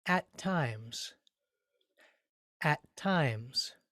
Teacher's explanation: at times, when we say that phrase, each word has more or less the same amount of weight or stress or accent. It's like if we were writing it just as far as the rhythm of the language is concerned, we would say bum bum at times.